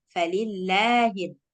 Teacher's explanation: La-nya berarti lebih panjang. Dua harokat.